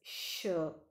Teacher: during the production of this sound the air escapes through the mouth with friction